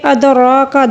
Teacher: ادراک دال کو قلقلے کے ساتھ، را کو پر پڑھیں گے